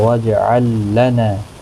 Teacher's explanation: وجہ جیم ساکن پر قلقلہ ہوگا، لام ساکن کو ہلانا نہیں، لام ساکن یہاں نہیں پڑھا جائے گا کیونکہ آگے لام مشدد ہے، تو یہ والا لام ساکن نہیں پڑھا جائے گا۔ واجعل لنا، نا الف مدہ ہے، ایک الف کی مقدار کے برابر کھینچ کر پڑھیں گے